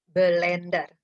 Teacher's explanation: Pada kata blender, terdapat penambahan vokal lemah e di antara klaster atau gugus konsonan bl menjadi blender. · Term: anaptiksis